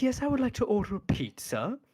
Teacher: Because he always has to do that thing where he says it in this rising tone down to a fall until he hits something he wants to emphasize